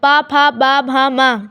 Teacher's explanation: ये होठों का स्पर्श करते हैं। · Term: प वर्ग